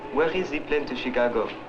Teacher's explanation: The words of the French speaker begin on a fairly high pitch and gradually fall to a low pitch on the final syllable.